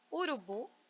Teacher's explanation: Urubu, bu é a sílaba tônica mais forte, né? Se ela é tônica, ela é mais forte.